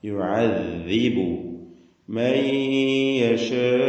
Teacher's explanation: ദാലാവട്ടെ നാവിന്റെ അറ്റം മേലെ മുൻപല്ലും. ദാല് റിഖ്വായി ഉച്ചരിക്കേണ്ട അക്ഷരമാണ്, ലൂസാക്കി അയവോടുകൂടി.